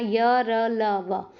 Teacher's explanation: जीभ जो है किसी भी भाग को नहीं छुएगी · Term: अंतस्थ